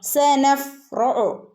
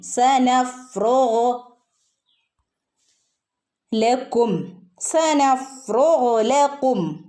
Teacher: ഗൈൻ തൊണ്ടയിൽ നിന്ന് വരുന്ന അക്ഷരം, തൊണ്ടേൻ്റെ മുകൾ ഭാഗത്തു നിന്ന് വരുന്ന അക്ഷരം ഗൈൻ